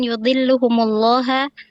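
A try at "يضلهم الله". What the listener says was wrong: Yudilluhumullahu. Allahu di situ fa'il ya.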